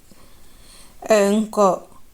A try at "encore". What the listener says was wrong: Non, ce n'est pas encore. C'est le ton moyen. Il faut tirer. Encore. Encore. Il faut tirer donc.